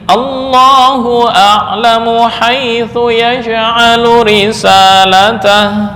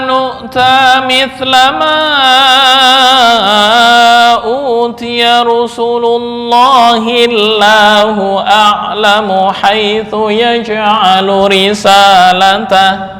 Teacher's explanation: Jika digabung berhenti wakaf pada Rasulullah, nah, kemudian memulai bacaan Allahu a'lam, maka lam dibaca tafkhim karena pada permulaan. Tapi ketika diwasolkan, Allahnya dibaca tarkik.